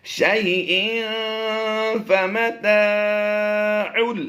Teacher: یہاں پر ہم نے تنوین کے بعد فا حروف اخفا سے پایا ہے تو اس لیے ہم یہاں پر غنہ بھی کر دیں گے